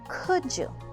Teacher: when we use could and you together we combine the d and the y to pronounce the j sound